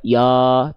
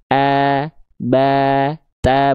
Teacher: Ya, begitupun pada huruf yang lain ketika dia berharakat fathah, maka dia vokal a-nya tipis. Buka mulutnya sedikit senyum.